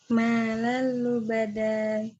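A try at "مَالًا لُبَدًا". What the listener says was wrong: Ya, itu pendek ya, walaupun ada alifnya. Mimnya yang bacanya panjang. Ma, ini ada 2 harokat.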